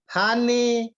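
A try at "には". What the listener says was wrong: Ini dibaca wa, Pak.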